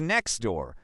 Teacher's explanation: For example, in the phrase next door, most people don't pronounce the t in next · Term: elision